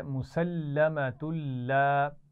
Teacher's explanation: یہاں پر غنہ نہیں ہو رہا کیونکہ تنوین کے بعد لام آ گیا ہے